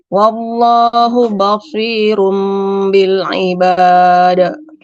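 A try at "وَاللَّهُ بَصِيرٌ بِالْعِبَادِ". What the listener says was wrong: Enggak boleh. Nah, bnya enggak boleh ketebalin.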